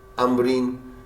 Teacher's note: امبر میں بھی میم پڑھا جاتا ہے، نون کوئی بھی نہیں پڑھتا · جب بھی نون ساکن آ رہا ہے اور اس کے بعد حرف با آ رہا ہے، اس نون ساکن کو میم سے بدل دیتے ہیں